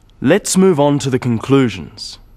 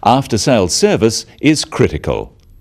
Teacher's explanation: note the downward intonation at the end of sentences